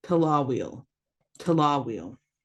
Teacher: you've got the schwa making the uh sound the a making the ah and the I making the eel